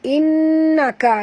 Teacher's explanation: Innaka nun bertasydid wajib dengung. 2 harakat wajib al-gunah.